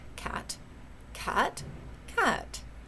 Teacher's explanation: cat you in English you can say Cat Cat Cat right those all have different pitches different contours to prosody if you will different tones but they still in English mean the same word